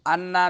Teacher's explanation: انا نون مشدد ہے تو نون مشدد میں غنہ زمانی ہوگا۔